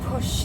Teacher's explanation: the shh sound is actually a voiceless sound